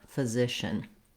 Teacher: the first syllable, ph, is short and has a reduced vowel. I wrote it here actually with the letters UH.